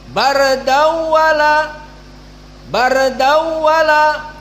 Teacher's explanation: Namun qiraah Hamzah idgham tetap tanwin dibaca kepada waw namun tanpa gunnah. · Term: idgham bila gunnah